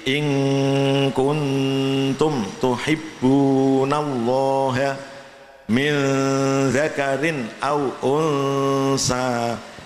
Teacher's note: Tarkik tanpa moncong ya, artinya bibirnya biasa, tidak usah meringis dan tidak usah moncong